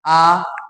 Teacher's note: पश्च स्वर, जीभ पीछे जाता है